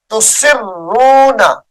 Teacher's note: تسرون سین کو را مشدد کے ساتھ ملا کر پڑھیں گے